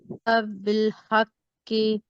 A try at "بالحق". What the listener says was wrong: بالحق کی دیکھیے کاف باریک ہو رہا ہے، اس میں کیا مسٹیک ہے؟ کاف آپ کی پورا ہونا چاہیے، بہت موٹا. ہاں جی آپ نے نا منہ میں آواز بھرنا ہے.